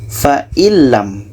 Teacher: nun masuk ke lam dan tidak ada dengung. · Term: idgham bilaghunnah